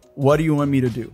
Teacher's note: the T sound in the word to becomes an American T